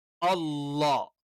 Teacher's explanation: അല്ലാ എന്ന് പറയുമ്പോൾ നാവിന്റെ മധ്യഭാഗം ഒന്ന് ഉയർന്ന് കിടക്കും. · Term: തഫ്ഹീം